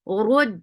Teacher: If, give hums in fa for fatha open jaws. Rud, ra is heavy for dhamma, circular lips attached with dal. Dal has a sharp sound.